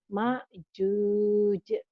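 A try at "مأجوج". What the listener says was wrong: Bukan ain ya, hamzah. Ma juj.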